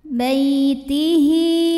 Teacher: Bay ada harfulin sebab ada ya sukun sebelumnya baris fathah, maka kita bunyikan dengan lembut.